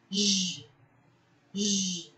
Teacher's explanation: There is a vibration, and that means this sound is considered voice consonant.